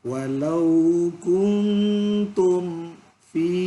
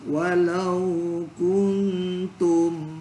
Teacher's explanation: mim mati ketemu fa itu izhar syafawi tidak ada dengung